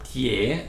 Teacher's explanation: But there is another shape actually that is a little bit less common, that is called Tie Bing Cha. So Tie, it is a second tone rising